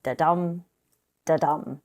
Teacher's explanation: two syllables the first syllable is unstressed followed by a stressed syllable